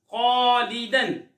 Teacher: خا حرف مصالیہ میں سے ہے، خا کو پر یعنی موٹا پڑھیں گے تو الف کو بھی پر یعنی موٹا پڑھیں گے۔